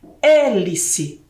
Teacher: você ouve o som do e da letra e acentuada aberta